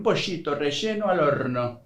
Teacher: Instead of pronouncing the double L, like Y, Argentines and Uruguayans pronounce it as sh, a phenomenon called yeísmo.